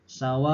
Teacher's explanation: ada mad wajib muttasil, ini harus 2,5 alif atau 5 harokat